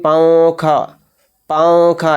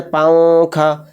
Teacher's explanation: نون کی جو وائس ہے، این کی وائس، وہ ناک میں چھپ رہی ہے، یعنی کلیئر ظاہر باہر ہو کر نہیں آ رہی ہے، وہ ناک میں ہی چھپ رہی ہے۔ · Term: اخفا